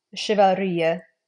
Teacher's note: Chevalerie, if you're saying chivalry. So this would have more of that sh sound than a ch.